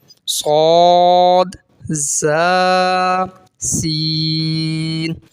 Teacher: जबान की नोक और दोनों दांतों के अंदरूनी किनारे से अदा होता है या जबान की नोक अंदर के जो किनारे हैं दोनों दांतों